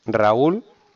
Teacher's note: Raúl también se rompe, porque el golpe de voz va en la U